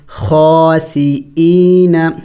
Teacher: یا مدہ حمزہ یا زیر ای، ایک الف کا مقدار کھینچیں گے. خاسئین، وقف کریں گے تو وقف میں نون کو سائلنٹ کریں گے یعنی ساکن کر دیں گے.